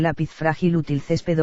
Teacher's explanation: Observamos aquí que, a diferencia de las palabras anteriores, estas sí llevan tilde, puesto que la mayor fuerza de voz está en la penúltima sílaba de cada palabra y estas terminan en consonantes distintas a la n y a la s. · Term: palabras graves